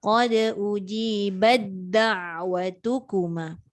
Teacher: Sedikit, tapi sebab dia nak jumpa dengan dal. Dal dengan ta ni kan sama tempat keluar. Masuk dal terus.